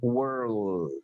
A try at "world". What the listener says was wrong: Ini bacanya world. Pakai suara E. Coba pakai suara E tapi dimunyungin karena ada R. Bukan langsung O, bukan world, bukan, tapi pakai suara E. World. Ini L-nya dibaca, kalau ini enggak.